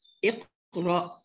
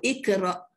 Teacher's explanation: Jadi qaf ini betul-betul anak tekak. Kalau kaf depan anak tekak. Itu dia. Depan sikit pada qaf.